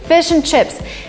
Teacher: the word and is in a weak form